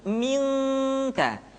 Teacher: ketemu kaf maka dominan kepada huruf eng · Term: ikhfa